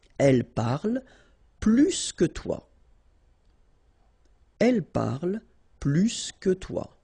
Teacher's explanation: remember, plus will be with the S. So pronounce it plus que.